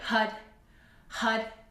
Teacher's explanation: when we chant Hud, the tip of the tongue touches the roof of the mouth